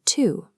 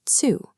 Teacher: This diagram illustrates the affrication rule. When a clean T sound sits right in front of a U or I vowel, the consonant mechanically shifts into a sharp TS sound. The standard French word tu becomes tsu.